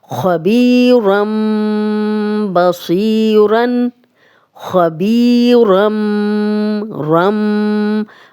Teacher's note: تنوین کے بعد بھی اگلا حرف با آئے گا تو تنوین بھی میم میں بدل جائے گی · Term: اقلاب کا قاعدہ